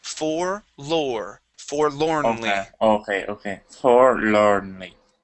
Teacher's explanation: the OR in both sides of that L are going to sound the same